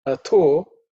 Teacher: Atho, atho is also second letter in the tha varga. It has to be aspirated.